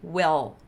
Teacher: Eu vou falar muito desse som, eu vou falar muito a palavra dark L, e eu sempre vou lembrar que é o som do L no fundo da boca, aquele lá que me faz gorfar